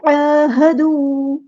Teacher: عین کو وسطی حلق یعنی مڈل تھروٹ سے ادا کریں گے